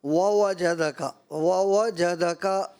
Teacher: واو جہدہ کا، واو جہدہ کا، یہاں 2 واو آ رہے ہیں اور ترتیل کا ہمارا راؤنڈ چل رہا ہے، تو دونوں واو کو کیسے ادا کرنا ہوتا ہے؟ دونوں ہونٹوں کی گولائی سے۔